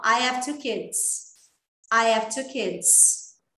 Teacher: tem nativo que ele reduz o H do have.